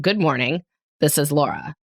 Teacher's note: my voice has this little like vocal fry in it almost every time I say, "This is Laura." So I say in the start of Before Breakfast, like, "Good morning, this is Laura." And my voice almost always has this tight little break in Laura.